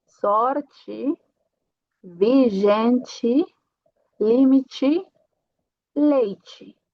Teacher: Se eu tenho uma T no final de palavra, que tem que ser átona, então também vai ser ti.